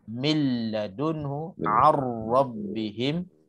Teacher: Okey, hukum yang kedua kita ambil yang tak dengung juga, idgham bila gunnah apabila nun mati ataupun tanwin bertemu lam ataupun ra. Idgham bila gunnah kamil, sempurna kita masukkan nun dan tanwin ke dalam huruf lam dan ra.